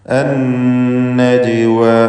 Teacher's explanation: അന്നജ്വ ഷദ്ദുള്ള നൂനിനെ മണിക്കണം. ജീമിന് ഖൽഖല സുഗ്റ നൽകി ശബ്ദം ഹറക്കത്ത് പോലെ ചലിപ്പിക്കണം